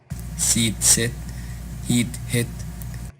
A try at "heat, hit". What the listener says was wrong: Again, longer. Meet, mit. Pete, hit. Focus on the longer vowel sound.